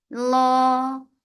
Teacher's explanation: lafz jalala will be heavy because there is fatha before it